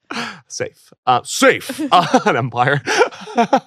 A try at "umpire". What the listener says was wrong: An umpire, not an empire. You said empire.